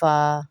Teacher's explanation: होंठों वाला हुर्फ है, फा भी होंठों से अदा होगा।